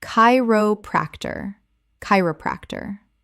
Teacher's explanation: 4 syllables with stress on the first.